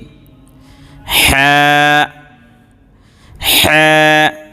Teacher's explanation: এটা গলার মাঝখান থেকে আসবে, খুব একটু চাপ দিয়ে পড়বেন